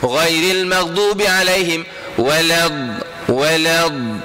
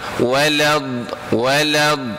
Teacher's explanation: Huruf dad ni jangan guna depan lidah, kena guna tepi lidah. Ghairil maghdubi alaihim walad, guna tepi lidah.